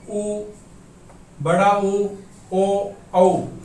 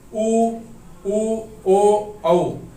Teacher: Number 1 वर्तुल या circle. जब हम स्वरों का उच्चारण करेंगे उ, बड़ा उ, ओ, औ, तो हमारे जो ओष्ठ हैं उनकी आकृति सर्किल के आकृति में आ जाएगी